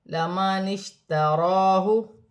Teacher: شین ساکن ہے، شین کو نون کی حرکت کے ساتھ ملا کر پڑھا جائے گا